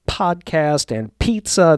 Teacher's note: those things called plosives where I've got extra air coming out when I say words like podcast and pizza